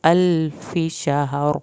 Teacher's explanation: من الف شہر، الفی، اس کو فی نہیں کرنا، اس کو لمبا ہرگز نہیں کرنا، الف شہر، اور شہر بھی آپ نے ایسے ادا کرنا ہے، ہا کی جزم اور را کی جزم ہی ظاہر ہو، یعنی ہا کے اوپر زبر نہیں لگانی، اس کو اکثر لوگ شہر پڑھتے ہیں، وہ غلط ہے۔